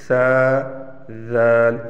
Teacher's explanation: एक ही है लेकिन सा और दल इनको अदा करते वक्त आप जबान की हल्की सी नोक दोनों दांतों के दरमियान में लाएंगे लेकिन पीछे से जबान को नहीं उठानी है